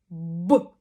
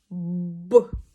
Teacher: губи наші наповнюються повітрям губи зімкнуті і відповідно іде вистріл б можна використовувати жест такий б можна використовувати щось Такий б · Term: губними звуками